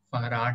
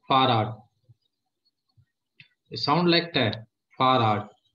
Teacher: वो ड का साउंड नहीं है, ट ही है, थोड़ा सा स्लाइटली आपको ऐसा सुनता होगा